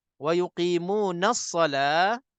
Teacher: Waktu kita sambung wa yuqimunas shalah, memang alif lam ni tak dibaca. Wa yuqimunas shalah, jadi daripada na terus sa. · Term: hamzah wasal